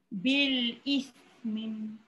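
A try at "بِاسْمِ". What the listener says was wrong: Jangan ismim. Bukan ismim. Mim adalah huruf. Tapi bila dia dah berbaris, matikan. Bil ism.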